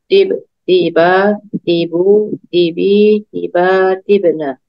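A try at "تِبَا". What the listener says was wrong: Tiba, tinya panjang Ibu. Tiba.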